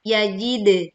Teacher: memantulkan dal sukun dengan suara pantulan yang jelas